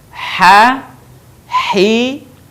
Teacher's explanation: Huruf ini dikeluarkan dari tengah tenggorokan kita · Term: huruf ha